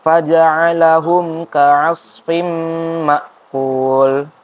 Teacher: mim sukun ada bertemu huruf kaf itu selain mim dan ba, jadi dibacanya jelas, langsung disambung aja. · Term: idhar syafawi